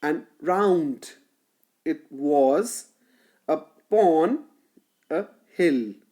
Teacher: The second syllable is stressed in this iambic tetrameter.